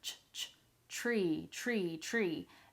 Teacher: The difference is what comes at the beginning of the word. So tree, we have a strong CH sound there.